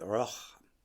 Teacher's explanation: we take this word rock and we aspirate the K and say roch